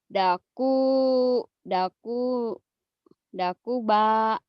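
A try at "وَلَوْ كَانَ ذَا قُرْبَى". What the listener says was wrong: Dakuba, bakekok. Jadi bukan dakuba, dakurba tuh. Walau kanada kurba, walau kanada kurba, walau kanada kurba.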